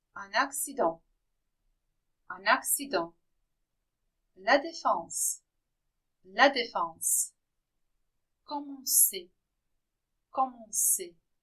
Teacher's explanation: If the letters CN are followed by a consonant, or if they are at the end of a word, they produce a nasal sound on, not an, but on